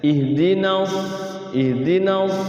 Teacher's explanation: ihdas ada anginnya ih ihnya juga ada anginnya